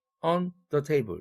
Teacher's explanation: 예를 들면 on the table에서 on the table 이렇게 떼어서 발음하면 안 된다는 얘기죠. on the table은 항상 하나의 의미단락이므로 붙여서 발음해야지 중간에 호흡이 들어가면 안 된다